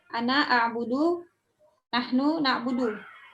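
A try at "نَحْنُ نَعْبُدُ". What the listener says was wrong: Cakep. Ahsanti. Nahnu na'budu.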